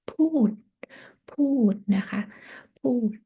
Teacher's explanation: for low class with the long vowels and the final consonant KPT, you have to say with the falling tone.